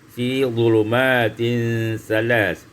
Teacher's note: maka tidak boleh diidghamkan dengan sa, harus dibaca dengan izhar dalam riwayat Imam As-Susi